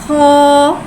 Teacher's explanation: खौ उर्फ मुस्तआलिया है, लिहाजा इसकी आवाज़ हलक से मोटी अदा होएगी। खौ के ऊपर खड़ी हरकत है, खड़ी हरकत को एक अलिफ यानी 2 हरकत के बराबर खींच के पढ़ेंगे और खड़े ज़बर को मुँह खोल के अदा करके पढ़ेंगे।